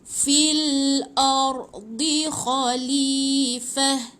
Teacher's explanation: Ta bulat bila mati jadi ha